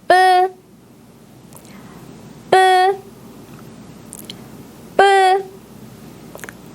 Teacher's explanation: 거의 움직이지 않았어요. 뿌 같은 된 소리 자음은 발음할 때 힘을 많이 주고 발음하기 때문에 밖으로 바람이 거의 나오지 않습니다.